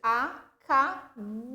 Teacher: O bou é o mais forte. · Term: oxítona